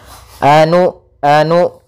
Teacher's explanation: maka usahakan ketika melafalkan Hamzah sukun itu memiliki sifat yang mana Hamzah memiliki sifat jahar dan sifat syiddahnya maka tertahan nafas dan tertahannya suara kita